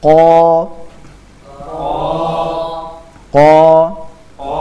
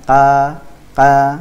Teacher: Q juga memiliki sifat Istia tebal jadi perhatikan dia harus diberikan sifat tebal